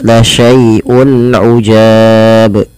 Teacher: Kemudian berlafal ujab, di sini ada bacaan izhar halqi, yaitu adanya dhammatain atau tanwin ya bertemu dengan huruf ain, maka di sini harus diperjelas bunyi suara unnya ketika ia bertemu dengan huruf-huruf izhar. Maka ketika lihat teman-teman, ketika kita membacanya harus diperjelas la syai'un ujab.